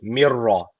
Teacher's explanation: ra harfi burada şeddeli gibi okunuyor. Neden? Çünkü idgam bila gun tecviti var.